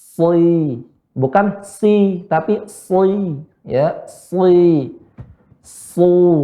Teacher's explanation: Adapun ya so, maka naikkan punggung lidah dan bibir agak sedikit ke depan karena menyesuaikan huruf isti'la. Dia huruf tebal.